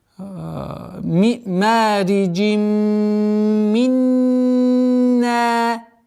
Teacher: С огласовки кясра уходим на третью назализацию, полную назализацию с полной ассимиляцией, и в размере 2 огласовок удерживаем третий раз.